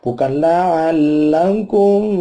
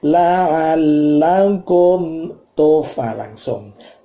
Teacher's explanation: Ada mim mati ketemu ta. Namanya idhar syafawi. Maka mimnya tidak boleh dipanjangkan matinya.